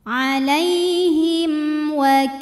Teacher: mim sukun kita bunyikan dengan jelas jadi kalau asalnya bunyi mim sukun M maka tetap m tidak ditahan